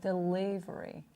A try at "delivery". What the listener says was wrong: Make the L a little lighter. Keep the tip of the tongue behind the teeth. Delivery. It's a little too heavy, the L.